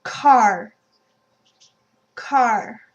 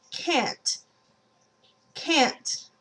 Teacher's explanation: the physiology is that your throat is closing up and so the air is forced through your sinus through your nasal cavity and that creates the nasal sound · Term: nasal vowels